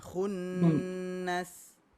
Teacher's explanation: Dia bukan panjang, dia dengungan.